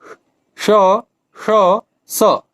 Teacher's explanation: न तो गूंज होती है और न ही स्वर तंत्रियों में कंपन होता है। इसमें व्यंजन वर्गों के पहले और दूसरे वर्ण तथा ऊष्म व्यंजन के श, श, स तीनों सकार सम्मिलित होते हैं। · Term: अघोष